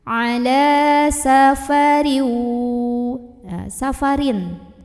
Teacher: Wa in kuntum ala, la di sini ada hukum mad tabi'i atau mad asli. Karena ada baris fathah tegak di atas huruf lam. Maka cara membunyikannya dipanjangkan 2 harokat saja.